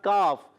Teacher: काफ का मखरज याद रखें ज़बान की जड़ और तालु का सख्त हिस्सा